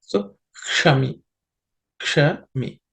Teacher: Here, uk and sh are there. The sh is again a cerebral sh. So the tip of the tongue has to point up towards the roof of the mouth.